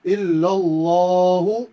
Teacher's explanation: اللہ کے نام کو کم سے کم 1 الف کے برابر کھینچ کے پڑھیں گے ، اللہ کے نام کو 1 الف کے برابر۔ اس کے